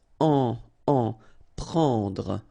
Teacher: Prendre, okay, remember combination of and n, it's what we call nasal, so it goes in your nose and it's en, prendre, okay, don't insist on the final Trouver.